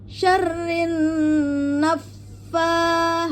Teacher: Naffasa ya pada sah dengan ujung gigi seri atas ya. Jadi syarrin tahan dua harakat kemudian naikkan pada pengucapan fa bertasdid.